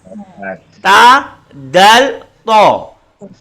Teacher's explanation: Ta ringan, dal sedang, to tebal, sifatnya yang berlainan.